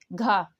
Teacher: यानी सघोष भी है और महाप्राण भी है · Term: सघोष महाप्राण ध्वनि